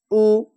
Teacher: মাজহুল পড়া নিষেধ, টান দেওয়া চলবে না। পেশ উচ্চারণে আওয়াজ সামনের দিকে যায় এবং ঠোঁট গোল রূপ হয়ে যায়।